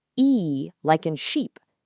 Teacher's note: your mouth, your tongue, and your lips remain completely stable from the very beginning of the sound right to the end. There's absolutely no shifting. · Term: pure vowels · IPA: /iː/